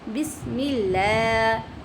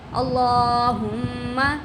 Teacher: ये देखिए अल्लाह की जो लाम है उसके पीछे ज़बर है, तो इस वजह से इसको हमने मोटा करके पढ़ा है